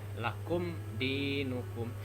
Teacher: izhar safawi, dibaca dengan jelas dengan mulut tertutup ya